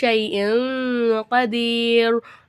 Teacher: காப் வந்திருக்கு காப் வந்து உடைய எழுத்து அப்ப நம்ம வந்து தன்வீனுடைய குறியீடை குன்னா செஞ்சு ஓதணும்